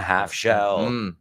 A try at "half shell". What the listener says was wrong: we don't pronounce the L in half. El error muy común nos dicen half.